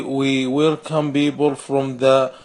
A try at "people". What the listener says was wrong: You want to say people, you need to pronounce that P with more air.